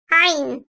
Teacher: Boğazın ortasından, gırtlak bölgesinden hafifçe sıkılmasıyla çıkarılan ayn harfi, ince sesliyle kalın sesli arası bir tonda telaffuz edilir.